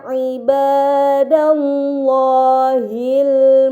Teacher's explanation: lam yang berada di lafaz Allah harus dibaca secara tebal